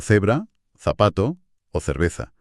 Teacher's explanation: Es ese sonido soplado que es idéntico al th del inglés en la palabra think. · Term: interdental